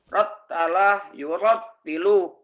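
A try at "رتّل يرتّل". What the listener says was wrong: Rattala, yurattilu. Bagus.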